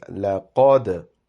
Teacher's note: lam is plain, but qaf is pronounced with a round-shaped mouth, and dal has a qalqala